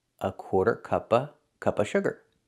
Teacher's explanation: We notice the pronunciation of of sounds like a. If of is before consonant, usually Americans do not pronounce the v sound and it sounds like a.